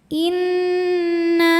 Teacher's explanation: Di sini ada hukum nun musyaddadah atau gunnah musyaddadah ya, atau wajibul gunnah. Karena nunnya bertasydid, maka dibacanya dengung, tahan dengungannya kurang lebih 2 harokat.